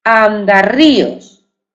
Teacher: el sonido doble R, es decir, ese fonema vibrante múltiple, va entre dos vocales, A y la I.